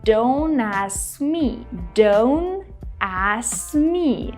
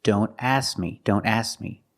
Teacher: When you say don't ask me, don't drop the K completely. We need to make the position of the K, but we don't release the sound. We don't say k, but we need to make the position.